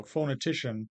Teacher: secondary stress on the first one primary stress on the third so you see the high tick and the low tick okay · phonetician the ti that third syllable is definitely primarily stressed but in the phona part the foe is more stressed than the no